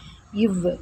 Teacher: இந்த இல் இது மேல்வாயை நாக்கின் ஓரங்கள் தடித்து தடவுவதால் பிறக்கிறது. இவ் இது மேல்வாய் பல்லை கீழ் உதடு பொருந்துவதால் பிறக்கிறது